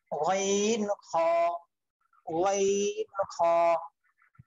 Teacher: 3 number মাখরাজ হলকের শেষ হইতে, হলকের শেষ হইতে গাইন খ